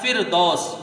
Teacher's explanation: فا جو ہے عربی والا جو ادا ہوتا ہے اوپر کے دونوں دانتوں کے کنارے نیچے کے ہونٹ سے مل کر فا ادا ہوتا ہے